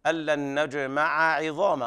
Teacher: لابد من بيان فتح العين الأولى وكسر العين الثانية